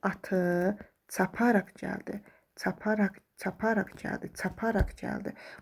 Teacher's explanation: Feli bağlama olduğuna görə də əlbəttə vurğu qəbul etmir və vurğunu özündən bir əvvəlki hecanın üstünə atmış olur.